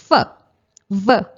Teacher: So our teeth are touched to our lips and the sounds produced are called labiodental sounds.